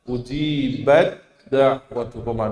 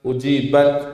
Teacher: Lebih kuat daripada huruf ta. Maka langsung taknya lebur masuk ke huruf dal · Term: diidgham kan